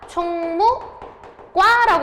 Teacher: 그럼 총무과라고 발음하면 뒷말에 지금 예사소리가, 안 울림 예사소리가 된 소리로 발음되는 거죠. 사이소리 현상이 일어났습니다.